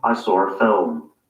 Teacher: you can hear that there's an r sound connecting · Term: intrusive r